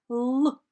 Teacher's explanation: притисніть кінчик язика до верхніх зубів і промовте звук л